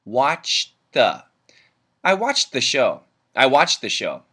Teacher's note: the D and the th get linked together but we keep only the th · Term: the th sound